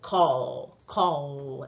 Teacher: Esa L le llaman dark L o L velar.